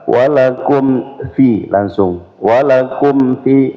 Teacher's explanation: tidak boleh didengungkan ya. Jadi dia izhar syafawi, ya. Mim sukun ketemu dengan selain ba dan mim.